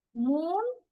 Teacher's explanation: In moon we have oo sound the tense vowel.